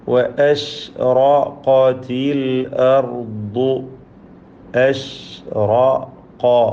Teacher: അഷ്റഖത്ത് എന്ന് പറയുമ്പോൾ റായിനും ഖാഫിനും മാത്രമാണ് തഫ്ഖീം കൊടുക്കേണ്ടത്. മറ്റക്ഷരങ്ങൾക്കൊക്കെ തർക്കീഖാണ്.